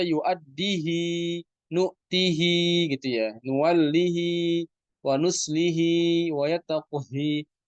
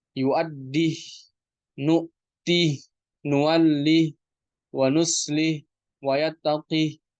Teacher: disukunkan hak kinayahnya tanpa ada silah. yuaddih nuwallih wauslih watattaqih.